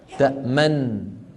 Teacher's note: وصادف أن كان بعدها نون متحركة فاجتمع في النطق نونان، نون ساكنة ونون فندغم النون الساكنة في المتحركة فيصير النطق بنون واحدة مشددة